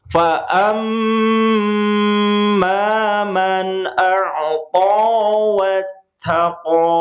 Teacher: mim bertasydid seperti halnya nun bertasydid, ditahan 2 harokat, kemudian ketika menemukan huruf ta, dia ada hamas keluar sedikit.